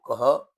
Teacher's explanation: क के बाद जो विसर्ग होता है उसको कह, यानी कि उसका ह उच्चारण होता है, कह